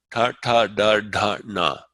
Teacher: This is the tongue going against the alveolar ridge behind the top front row of teeth. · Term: retroflex